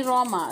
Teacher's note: यहाँ पर रॉ को मोटा पढ़ेंगे